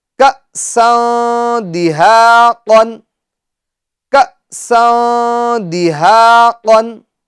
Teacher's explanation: سین کی تنوین میں اخفا یعنی گنہ ہوگا، کیونکہ تنوین کے بعد دال آ رہا ہے، اور دال یہ حروف اخفا میں سے ہے۔